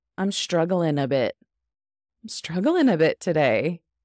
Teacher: because we already have a lot of G's in this word, struggling, we're going to drop that G